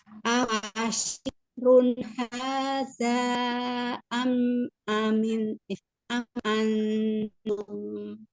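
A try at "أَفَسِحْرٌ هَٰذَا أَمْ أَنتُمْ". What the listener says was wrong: Jangan lupa ya, ini si bukan syih. Tapi si.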